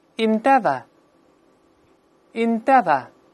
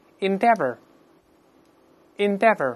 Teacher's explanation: 这个英式拼写呢▁OUR▁比较麻烦，发音呢不加卷舌音